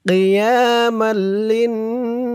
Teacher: মিম লাম দুই জবর মাল, লাম দিয়ে আবার এই তাসদিদওয়ালা নুনকে ধরবে। লাম দিয়ে যখন এই তাসদিদওয়ালা নুনকে ধরবে তখন ওয়াজিব গুন্না হবে। লাম নুন জের লিন, নুন আলিফ জবর না, কিয়ামাল লিন্নাসি।